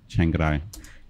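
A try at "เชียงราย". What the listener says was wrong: Chengarai. It almost comes as an extra syllable. Chengarai. Chengarai. Chengarai. Chengarai. It almost throws an extra syllable in there.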